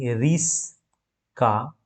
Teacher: দুটি যে ব্যঞ্জন ধ্বনি তাদের উচ্চারণের দ্রুততার কারণে স্থানের অদল বদল করেছে স্থান পরিবর্তন হয়ে গেছে তাই না তাহলে এই ধরনের যে স্থান পরিবর্তন ব্যঞ্জন ধনির তাদেরকে কি বলা হয়? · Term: বর্ণ বিপর্যয়